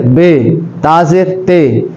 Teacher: اور یعنی مجہول طریقے سے بھی نہیں پڑھنا۔ ہمارے جو بر صغیر میں ہیں وہ مجہول طریقے سے پڑھتے ہیں